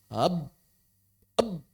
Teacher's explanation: artikulator aktif bibir bawah menekan kuat artikulator pasif bibir atas. AB eBenar-benar terkunci rapat, tidak ada aliran saut lagi.